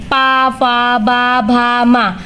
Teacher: ओष्ठ या ओठ की सहायता से बोले जाते हैं।